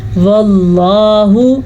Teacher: लफ्ज़ अल्लाह को पुर पढ़ना है क्योंकि लफ्ज़ अल्लाह से पहले ज़बर है।